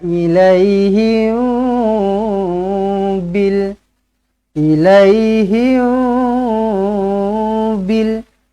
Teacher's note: Mim kosong bertemu dengan ba, ikhfa syafawi, dengungkan dengan dua harakat.